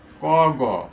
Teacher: সেই বর্গের প্রথম আর তৃতীয় বর্ণ হচ্ছে অল্প প্রাণ ধ্বনি।